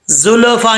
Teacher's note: اب لام جو ہے ساکن ہے، اکثر لوگ اس میں قلقلہ کر دیتے ہیں، قلقلہ نہیں کرنا